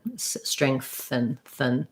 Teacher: I almost go right from the TH to the N